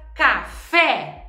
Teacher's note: oxítona ela recebe o acento tônico ou seja um assento forte na pronúncia na última sílaba · a palavra café ela tem acento no fé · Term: sílaba tônica